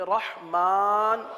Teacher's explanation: اس را کو پر پڑھیں گے، ہا کو واضح کریں گے، رحمان، میرے ساتھ پڑھ لیجئے، رحمان، رحمان نہیں پڑھیں گے، رح تو مجہول ہو جائے گا، رحمان، الرحیم، رحمن الرحیم.